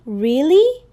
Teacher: With your voice lifting. And that's a rising tone.